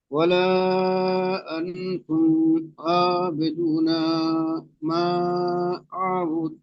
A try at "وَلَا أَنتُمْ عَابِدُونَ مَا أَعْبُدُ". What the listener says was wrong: আনতুম আবিদু না, নুন টান দিয়ে ফেলেছেন, নুন টান হবে না। তো হুটপাট করে পড়তে গিয়ে এখানে আনতুম নুন সাকিনের পরে তা এসেছে তাই নুন সাকিনকে একালি পরিমাণ গুণনা করে পড়তে হবে। এখানে গুণনা ছেড়ে গিয়েছে।